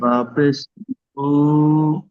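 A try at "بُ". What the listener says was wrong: শুধু ও ভাইজান শোনেন, বাপেশ বু টান হয় না, বা হলো হারাকাতের। বুটা টান হবে না, এটাই টান হবে। বানান ঠিক করছেন, কিন্তু এই বুটা টান হবে না।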